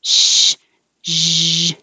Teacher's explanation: Sh, zh, the same, sh, but with voicing.